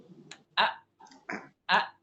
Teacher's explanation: ketika Hamzah keluar pita suara itu mengatup a a mengatup a ketika Hamzah itu ee berharakat itu pita